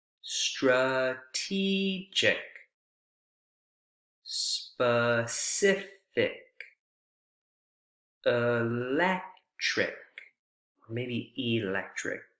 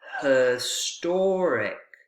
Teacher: Notice how unstressed those, how reduced those vowel sounds are in the unstressed syllable. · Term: schwa